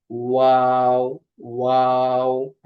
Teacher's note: দুই ঠোটের গোল করে সামান্য খোলা রেখে উচ্চারিত হয়